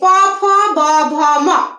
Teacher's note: আমি সব দুই ঠোঁটের সাহায্যে উচ্চারিত করছি, প ফ ব ভ ম, দুই ঠোঁটের সাহায্যে এটা উচ্চারিত করছি, এই জন্য এটা ওষ্ঠ।